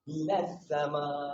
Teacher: walaupun di tengah dia ada hamzah wasal, ada huruf lam, semua tak bunyi, kita terus daripada nun masuk ke huruf sin. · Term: alif lam syamsiah